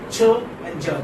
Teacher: Gradual release. So you have complete obstruction. You stop your breath also. That's there inside your mouth, and instead of releasing suddenly, you release it gradually. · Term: affricates